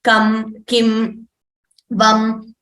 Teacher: So for the anuswaraha, kam, kim, vam, the anuswara, the dot on top, that is pronounced with the nose.